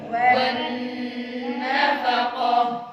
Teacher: nun tasydid dengan yang lama, bacaan idgham, bacaan gunnah musyaddadah. Wannafaqah.